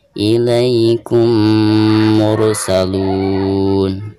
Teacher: harus memasukkan mim yang pertama ke dalam mim yang keduanya sekaligus digunakan. Ilaikum mursalun. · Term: idgham mimi